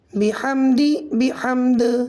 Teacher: با زیر بی، حا میم زبر حم بحم، دال زیر دی بحمدی بحمد، حالت وقف میں دال کا زیر ختم ہو جائے گا، دال ساکن ہو جائے گا، دال حروف قلقلہ میں سے ہو جائے گا، قلقلہ ہوگا قلقلہ کبریٰ